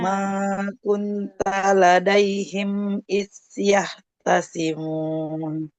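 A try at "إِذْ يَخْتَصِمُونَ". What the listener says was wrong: Iz huruf zalnya jangan seperti sa. Makronya sudah tepat, tapi karena sifat nafasnya keluar, jadi kayak sa. Iz. Nah, bukan is, tapi iz.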